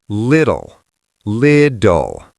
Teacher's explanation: The end is that dark L sound. It is not lit-tell. It is lid-doll.